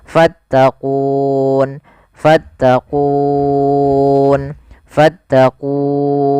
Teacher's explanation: Awalnya kan ku 2 harokat, karena ada sukun arid menjadi kita boleh membaca dengan 3 pilihan, boleh 2 harokat, boleh 4 harokat, boleh pula 6 harokat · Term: mad arid disukun